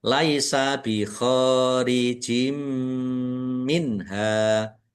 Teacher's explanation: Kasroh tanwin bertemu dengan huruf mim. Idgham bi gunnah masuk dengan mendengung yaitu mendengung mim. Ditandai mimnya ada tasdidnya, ditahan biar tampak mendengungnya.